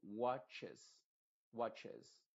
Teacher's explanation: se pronuncia esa e como una I modificada